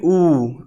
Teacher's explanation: आपका ओठ सामने आ रहा है कि नहीं आ रहा? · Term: ओष्ठ